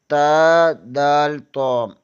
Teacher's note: زبان کی نوک ثنائے علیہ کی جڑ سے لگے تو تا، دال، تو ادا ہوتے ہیں۔